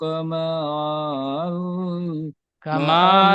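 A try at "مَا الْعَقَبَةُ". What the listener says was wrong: কামাল বলে টান দিচ্ছে, মিম লাম জবর মাল, কামাল। আলিফটি বাদ যাবে, সাকিনের সাথে যুক্ত করে, সাকিন যুক্ত অক্ষর ডান দিক অক্ষরের সাথে মিলিয়ে পড়তে হয়। তো মিমটি লামের সাকিনের সাথে যুক্ত করে পড়তে হবে, আলিফ বাদ যাবে।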